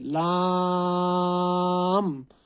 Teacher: जबान के किनारों को साइड के दाढ़ों से लगाने से अदा होता है। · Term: लाम का मखरज